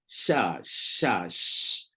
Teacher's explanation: Huruf shin ni dia tak melibatkan bibir pun. Dia tak datang dari bibir pun. Huruf shin ni dia totally dari lidah. Setting lidah betul-betul, keluarlah sya.